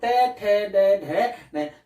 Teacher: जीवा थोड़ी सी गोल होकर कहां टकराती है, मसूड़ा यानी तालु और दांत के बीच की जो जगह है वहां पर टकराती है। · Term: मूर्धन्य